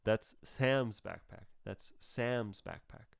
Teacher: i say sam louder than even backpack so go sam's backpack it goes from loudest to louder to the least loud